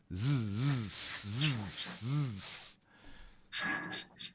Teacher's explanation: if you put a voice in an s you're going to get a zed